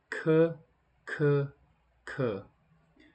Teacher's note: go into the aspirated consonants, and these are just a little stronger, more powerful